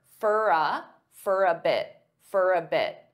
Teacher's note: going to say out I'm going out I'm going out now many native speakers will combine all three of these together and they'll pronounce for as more of an unstressed fur